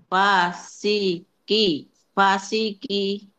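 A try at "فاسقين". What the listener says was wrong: Q-nya lebih tebal. Qi. Ya, sambil dorong ke dalam lidahnya. Qi.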